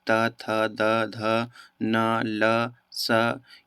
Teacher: ल स यह सभी जो है यह सभी दंत ध्वनि है यानी कि जीभ जो होता है वह ऊपर के दांत से टकराती है · जिस वर्ण के उच्चारण करने में जीभ ऊपर के दांतों पर लगती हैं वे दंत ध्वनि कहलाते हैं।